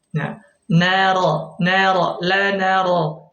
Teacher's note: huruf ro ini keluar dari ujung lidah sama seperti huruf nun sama-sama dari ujung lidah thful lisan ya thful lisan ya dari arah punggungnya bertemu dengan